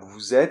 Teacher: la liaison entre le pronom et le verbe vous êtes, celle-là, elle est obligatoire